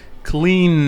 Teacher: Si la garganta vibra, entonces estamos hablando de que es un sonido con voz. El sonido de la N es un sonido que vibra y por lo tanto tiene voz. Si el sonido tiene voz, cuando lo convertimos en pasado, la última sílaba la vamos a pronunciar d, como una d.